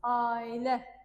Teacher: Amma biz bilirik ki, ailə sözündə A saiti uzanır.